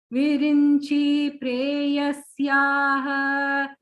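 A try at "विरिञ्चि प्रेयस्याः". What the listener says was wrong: Chi is the short vowel there. Virinchi preyasyaha.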